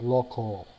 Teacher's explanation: Local follows a bit the roots of the Latin alphabet, lo, but the A and the L, the A merges its sound with the L to sound almost like an O.